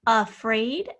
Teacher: we can clearly hear our schwa here spelled with an a